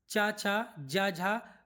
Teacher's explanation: च वर्ग जो था वह तालू से था ना उसे स्पर्श संघर्षी बोलते हैं